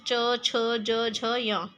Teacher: च वर्ग जो हमारी तालव्य ध्वनियां कहलाती हैं।